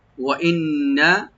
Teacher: নুন মুসাদ্দাদ এখানে ওয়াজিব গুন্না, কালি পরিমাণ গুন্না করতে হবে, টান হবে না।